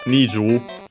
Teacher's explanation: like 20, Niju, the accent is on the Ni before Ju